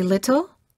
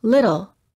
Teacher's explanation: where the tip of the tongue touches the upper gum Ridge this sound is also sometimes called a tapped T because you quickly tap the tip of the tongue on the gum Ridge